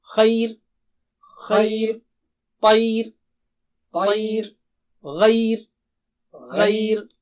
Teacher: ای کہنے میں زبان باریک ہو گئی تو را کو بھی باریک کر دیں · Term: را کو باریک